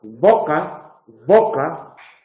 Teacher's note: por un lado es sonoro y nos podría sonar a boca, pero por otro lado es fricativo labiodental y en eso se parece a foca